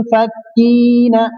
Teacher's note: यहाँ पर मुन पे इख्फा हो रहा है।